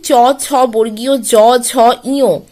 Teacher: উচ্চারণের সময় আমাদের জিভের সামনের দিকের অংশ আমাদের কঠিন তালুতে স্পর্শ করে যায়, সেই কারণেই এগুলিকে আমরা বলবো তালব্য বর্ণ।